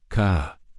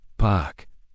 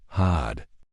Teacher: most accents in England are non-rhotic. We only pronounce the R if it's followed by a vowel sound, so we say ka, pak, and had.